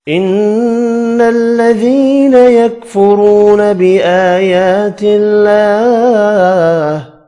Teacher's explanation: ان الذين نون مشدد پر غنہ کریں گے، یا مدہ ایک الف کی مقدار میں کھینچ کر پڑھنی ہے۔